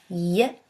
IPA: j